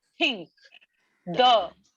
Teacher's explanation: and say they both come from the same place your upper your tongue is touching the back of your upper teeth